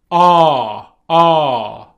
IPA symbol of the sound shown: ɑː